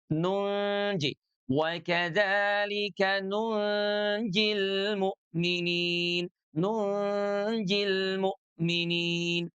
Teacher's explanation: huruf 'nun' tidak lagi diucapkan di ujung lidah yang menempel pada langit-langit mulut bagian depan , tetapi ujung lidah sudah menutupi titik keluar huruf 'jim', yaitu bagian tengah lidah. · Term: ikhfa